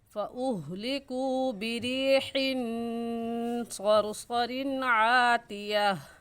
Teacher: واو مدہ کو ایک الف کے برابر کھینچ کر پڑھتے ہیں